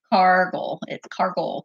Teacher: I always tell the kids to pretend that they're a pirate and put the emphasis on the first syllable